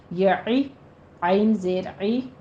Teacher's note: عین کے نیچے کسرہ ہے، عین وسط حلق سے